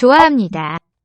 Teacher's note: So the H will be silent between vowels, but it still has an effect. 좋아합니다. By the grammar of the inflection, by that part of the Korean grammar, H is still present as a consonant.